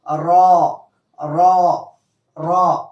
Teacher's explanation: را یعنی ہونٹوں کو گول کریں گے ہم، اور اس کے بعد را کو موٹا کر کے پڑھیں گے، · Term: پر